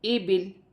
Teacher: وقف کی صورت میں زیر گر جائے گی اور لام ساکن ہو جائے گی۔